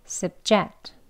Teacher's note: 동사로 쓰일 때는 강세가 이음절에 있어요. 앞에를 힘 빼시고 약한 이 슈아 발음으로 해요. 입술만 떼시고 으 소리가 들어간 어 발음으로 약하게 합니다. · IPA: /səbˈdʒekt/